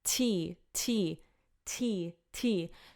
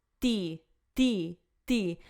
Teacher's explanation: you could feel air coming on your hands and kind of on your lips to like it's kind of pushing down a bit tea tea · the D has less air coming out